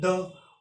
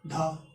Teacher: सघोष का अल्प प्राण धीरे से साउंड निकल रहा है द, और ये सघोष का महाप्राण धा तेज साउंड निकल रहा है